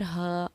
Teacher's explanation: ہا الف زبر ہا، الف سے پہلے کیونکہ زبر ہے اسی لیے الف کو ہم نے حروف مدہ پڑھا اور ایک الف کے برابر کھینچ کر ہم نے اس کو پڑھا